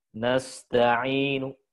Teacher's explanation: Nu-nya dibaca tapi pelan dan pendek